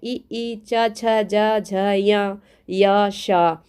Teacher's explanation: ये तालू से बोलने वाले हैं